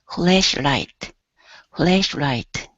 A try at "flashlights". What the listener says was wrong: now add the S on the end